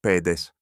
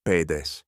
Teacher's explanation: Only the length of the last vowel separates them. Every other case pulls them apart at once.